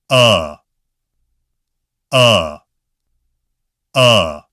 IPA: ʌ